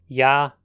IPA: ja